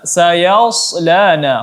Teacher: Huruf shad di sini tebalkan lagi, ditebalkan ketika ingin menyukunkannya.